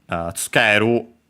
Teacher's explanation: the u uh barely heard if at all because it's between unvoiced consonants, unaccented.